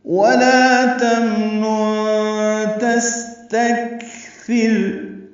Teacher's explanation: تمنن میم ساکن پہ اظہار، نون ساکن پہ اخفا ہے، نون ساکن کے بعد تا آ رہا ہے اس لیے اخفا ہو رہا ہے۔